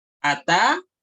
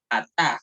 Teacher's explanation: Se cambia de una pataj, de una vocal corta a una vocal larga.